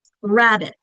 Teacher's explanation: which syllable is said louder with more emphasis? The first one, rabbit.